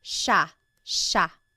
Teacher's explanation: There are some regions in the Philippines that might pronounce it sia, but for the most part in the central Luzon Tagalog speaking areas, it's pronounced sha sha